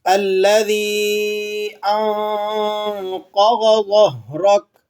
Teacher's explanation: اور قوف اور غوت دونوں کو آپ نے پر کر کے یعنی موٹا کر کے پڑھنا ہے۔ آگے ظو آ رہا ہے، ظو کو بھی آپ نے موٹا کر کے پڑھنا ہے۔